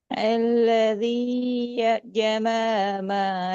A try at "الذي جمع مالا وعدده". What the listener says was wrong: ஜமா இல்ல. ஜமா الذي جمع ماله. الذي جمع அந்த தொண்டையில வரணும். ஜமான்னு வரக்கூடாது. ஜமஅ மாலஹு.